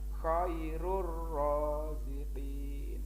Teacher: Bacaan idgham bila gunnah. Cara membacanya, langsung masuk ke huruf ro, tidak boleh mendengung.